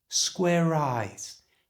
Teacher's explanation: To say this in a fast, natural way, move the R sound from square over to the front of the I sound in eyes. So it's not square eyes, it becomes square eyes.